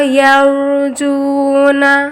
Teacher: روائے ساکن موٹی ہے